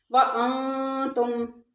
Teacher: وَأَنْتُمْ میں نون ساکن اور اس کے بعد حروف اخفا کے 15 حروف میں سے تا ہے، اخفا مال غنہ ہوگا